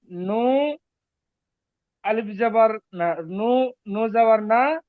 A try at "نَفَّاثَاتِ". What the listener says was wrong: নু বলবেন না। নুন। হ্যাঁ, পরিষ্কার করেন।